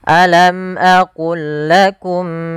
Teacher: Maka ini kita namakan, yang kami belum tuliskan di sini, ini kita namakan dengan idgham idgham mutamasilain, yaitu huruf-hurufnya sama dari makhraj dan sifatnya, yaitu cara membacanya memasukkan langsung lam yang pertama kepada lam yang kedua tanpa ditahan